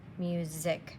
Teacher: this is an s music it almost sounds like a z sound